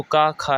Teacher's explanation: तो का खा है जो ये कंठय ध्वनि है। ठीक है, तो का वर्ग के जितने भी वर्ण हैं ये कंठय ध्वनियाँ होती हैं